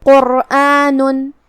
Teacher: ہم قاف کو اور را کو دونوں کو تفخیم سے ادا کریں گے